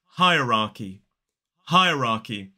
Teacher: we don't pronounce the second R, but we do pronounce the first one · 3 syllables, the stress falls on the first. Hierarchy. So it's higher, higher, then ah, ra, and then k, e.